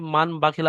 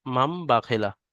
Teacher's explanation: দেখেন এখানে নুন সাকিনের পরে বা এসছে, ওই জন্য করে এই নুনকে বাদ দিয়ে ছোট্ট মতো একটা মিম লেখা থাকে এখানে, এই মিমকে পড়তে হয়, মাম বা খেলা পড়তে হয়, এর নাম ইকলাব।